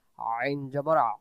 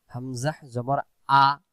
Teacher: উচ্চারণ সবাই ধরি, আইন জবর আ, আবার আইন জবর আ, আইন পেশ উ, আইন জের ই, ভেঙে ভেঙে উচ্চারণ, আ, উ, ই, আইন দুই জের ইন, আইন দুই জবর আন, আইন দুই পেশ উন, ভেঙে ভেঙে উচ্চারণ, ইন, আন, উন, আবার ইন, আন, উন। তাহলে আইন অক্ষর হলকের মধ্য থেকে একটু চেপে পড়তে হয়, আর হামজা অক্ষর হলকের প্রথম থেকে শক্ত করে পড়তে হয়।